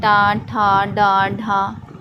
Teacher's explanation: जैसे हम लोग पढ़ते हैं टा, ठा, डा, ढा, तो ये मूर्धा को स्पर्श करता है हमारा जीभ